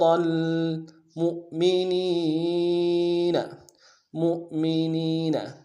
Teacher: ول اجر المؤمنین، مؤمنین، میم کو حمزہ کے ساتھ ملانا ہے. یہ حمزہ بشکل واو ہے، واو نہیں ہے بلکہ حمزہ ہے، واو کی شکل کا آیا ہوا ہے، جھٹکا دیں گے